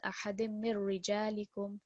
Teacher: We have just a kasra underneath the ra. This is going to be a thin ra sound with some stress because of the ra mushaddad.